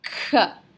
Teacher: to where your tongue is when you pronounce a cook sound the back of your tongue is kind of up it's forcing the air to go up over your tongue to the very top of your mouth before coming out